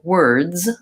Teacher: For example, on the word words, we have the d, and z sound all at the end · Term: consonant clusters